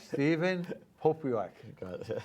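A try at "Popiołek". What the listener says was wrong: It's actually, the T is a Polish letter. It's like an L with a T crossbar, so it sounds like a W.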